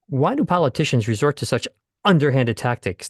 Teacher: the voice actor has had a glottal stop before the word underhanded